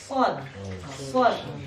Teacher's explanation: Artinya agak tinggi sedikit dibanding dengan sin Dan zai ada tinggi sedikit. Jadi makhrajnya agak dilipat lidahnya sedikit ke atas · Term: sifatul isti'la